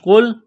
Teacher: اس قاف کو موٹا کرنا ہے